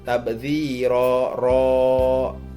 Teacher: Dan yang ke-13 yaitu tabdziro ro, itu hukumnya mad iwad karena ro berharokat fathah tanwin dan diwaqaf. Cara membacanya tanwin pada huruf ro itu dihilangkan dan panjangnya yaitu 2 harokat.